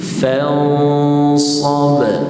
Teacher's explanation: Ikhfa huruf sad. Sad huruf tebal, maka dengung bunyi ikhfa dia tebal.